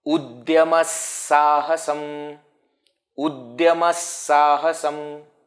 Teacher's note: So, because the next one is Sa, Visarga also will be pronounced as Sa.